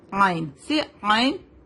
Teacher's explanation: حلق کے بیچ والے حصے سے عین ادا ہوتا ہے. عین سے عین.